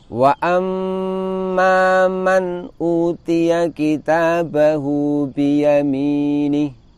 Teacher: Man utiya sedikit saja dengungnya. Man utiya, di situ terdapat nun sukun bertemu dengan hamzah.